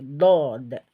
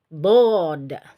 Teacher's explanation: isti'la itu adalah suara diarahkan ke atas saat pengucapan dod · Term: sifat isti'la